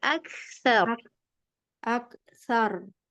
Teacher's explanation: A-nya tipis, K-nya juga tipis. Kasih suara yang eh nafas yang ngalir.